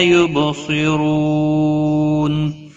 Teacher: را پیش کی وجہ سے پر پڑا جائے گا۔ نون وقف کی صورت میں نون ساکن پڑا جائے گا، وقف بالاسکان ہوگا، 3 سے 5 الف کے برابر کھینچ کر وقف کریں گے، اس کو مد العارض وقفی بھی کہتے ہیں۔